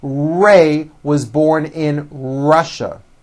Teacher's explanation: Notice how my lips come forward on all my R's and W's.